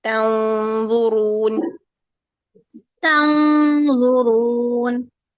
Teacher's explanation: ضا کے مخرج پہ زبان کے اس کے بالکل قریب جا کر پھر نون کی آواز کو چھپانا ہے، دین نون کی آواز کو 2 حرکات کے لیے چھپا کر پھر آپ نے ضا کو ادا کر دینا ہے، ٹھیک ہے۔